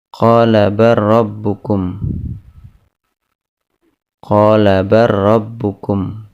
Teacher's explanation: lam pada kata bal bertemu dengan huruf ra, maka dibaca dengan idgham.